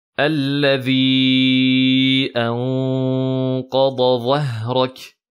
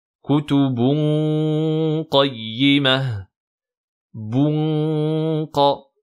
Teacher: La langue bloque bien le son au fond pour le faire passer seulement par la cloison nasale et on met bien une runna emphatique.